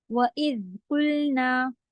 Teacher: قوف پہ پیش آپ ہونٹ گول کریں گی، لام کے لیے سیدھے